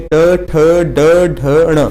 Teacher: और ट आप देखेंगे इस तरह से आपको रिलेट करना है कि ट बोलेंगे तो आपकी जीभ जो है वो ऊपर की तरफ मुड़ेगी, तो इसे हम टवर्ग के अंतर्गत आते हैं। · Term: मूर्धन्य